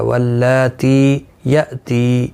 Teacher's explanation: یہاں پر بھی تی ہے اور یہاں پر بھی تی، دونوں کو ایک ایک الف کی مقدار کے برابر کھینچ کر پڑھیں گے. حمزہ ساکن کو جھٹکے کے ساتھ ادا کیا جائے گا